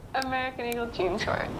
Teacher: She's got vocal fry in this commercial.